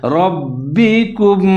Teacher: را کو موٹا کر کے پڑھیں گے، آگے با مشدد ہے اس کے ساتھ ملا کر پڑھیں گے اور مضبوطی کے ساتھ پڑھیں گے۔